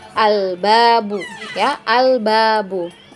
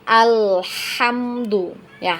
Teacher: alif lam bertemu dengan huruf ba ya maka lam ya dibaca dengan jelas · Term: al qomariyah